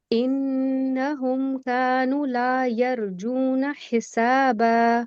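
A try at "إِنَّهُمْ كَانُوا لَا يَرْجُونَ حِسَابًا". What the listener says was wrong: कानू तो पूरा दो हरकत पे लेके जाइए. इन्नहुम कानू ला यरजून हिसाबा. पुर करें. यरजून हिसाबा.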